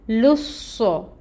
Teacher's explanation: یہاں پہ اب ہم لام کو صاد سے ٹائٹلی جوائن کریں گے، صاد پہ ٹائم ٹیکنگ ہوگا